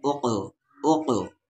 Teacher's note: قاف ہے اور قاف ساکن ہے تو یہاں پر قلقلہ ہوگا، یعنی آواز کو ہلا کر ملائیں گے یہاں پر۔